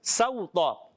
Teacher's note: سین کو باریک رکھنا ہے اور واو لین بن جائے گا. واو ساکن سے پہلے زبر ہے، واو لین نرمی سے ادا کریں گے.